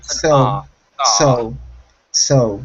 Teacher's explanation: remove that ooh sound at the end